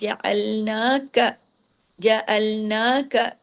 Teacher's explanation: نون پہ کھڑی زبر ہے، کاف کو ایک حرکت، جعلناک، جعلناک، کاف زبر کا کو زیادہ لمبا نہیں کھینچنا، اضافی حرف ہو جائے گا